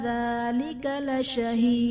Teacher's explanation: لشہید میں یا ساکن سے پہلے زیر ہے، یا مدہ کا قاعدہ ہے، اور حرف مدہ کے بعد جب عارضی سکون ہو، یعنی وقف کی وجہ سے جب ہم کسی حرف کو ساکن کر دیتے ہیں تو وہاں پر مد عارض کا قاعدہ ہوگا، اور دال جب وقف کی صورت میں حرف قلقلہ ساکن ہوگا تو یہاں پر ہم قلقلہ خوب ظاہر کریں گے